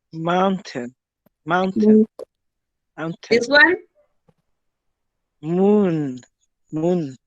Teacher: voiced bilabial nasal sound voice because we should produce a vibration bilabial because we use our lips together and the nasal because the air goes through our nose · begin with the lips together the vocal cords vibrating and escaping through the nose